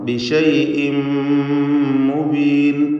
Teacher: തൻവീനും ശേഷം മീമുമാണ്. ഇദ്ഗാം ബിഗുന്ന കാമിൽ പൂർണ്ണമായും മീമിലേക്ക് ലയിപ്പിച്ച് മണിച്ചുകൊണ്ട് ഉച്ചരിക്കണം.